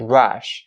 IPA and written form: rʌʃ (rush)